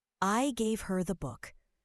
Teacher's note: Stressing gave emphasizes the action of giving.